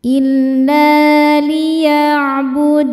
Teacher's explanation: La hukumnya mad tabi'i dhahiri. Sebab ada alif sebelumnya baris fathah. Cara bacanya dipanjangkan 2 harokat.